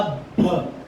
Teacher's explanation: جب وہ با کے اوپر زیادہ سختی کر رہا ہے تو وہ حرف کے ساتھ بدل کے بھا ہوتا ہے، ب نہیں رہتا. اس لیے سختی ہو لیکن ہلکی ہو.